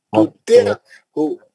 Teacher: تطیعہو عین کا آواز نکالنا ہے نا، تو کے زیر کو عین سے ملانا ہے